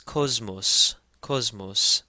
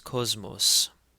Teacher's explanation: because the first sema in the word is followed by a me, it takes a Z sound